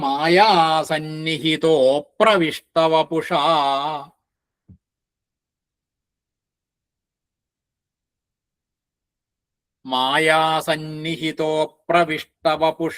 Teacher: രണ്ടും കൂടി കൂടുമ്പോഴ് മായാസന്നിഹിത എന്നുള്ളത് വിസർഗം ഓകാരായിട്ട് മായാസന്നിഹിതോ എന്നാവും. അപ്രവിഷ്ട വപുഷ എന്നുള്ളതിന്റെ അകാരം ലോപിച്ച് വരും